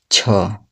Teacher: छ जो है वो स्पर्श तालु व्यंजन है